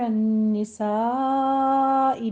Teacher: علی النساء میں نون مشدد ہے، غنہ واجبہ کریں گے، 2 کاؤنٹ کرنا ہے، اور سا میں مد متصل واجب ہے 5 کاؤنٹ کرنا ہے۔